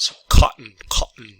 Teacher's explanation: remember the double T is actually less, it's a less strong phoneme. So it's like a pause in your throat